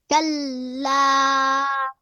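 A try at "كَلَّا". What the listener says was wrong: Good job.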